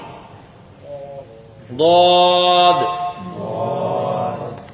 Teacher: یہ زبان کی کروٹ اور اوپر کی داڑھوں کی جڑ سے ادا ہوتا ہے